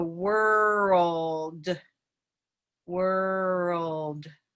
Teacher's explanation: But there's a different L happening here, and it's what we consider a very vowel-like L or dark L, and it's back here.